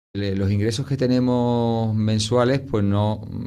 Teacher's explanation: Okay, so we see that this speaker is eliding a lot of final S's.